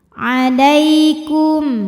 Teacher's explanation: Lai ada huruf lin sebab ada ya sukun didahului baris fathah, maka dibacanya lembut atau lunak.